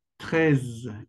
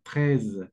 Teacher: Como que arrastras un poquito la z.